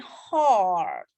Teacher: Oke, jadi ini tuh A tapi dia panjang dan dalam gitu